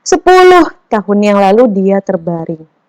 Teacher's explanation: Jadi yang ditekankan hanya kata-kata 10 karena yang digaris bawahi kata 10. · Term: tekanan kata